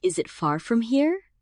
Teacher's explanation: Rising intonation at the end signals a question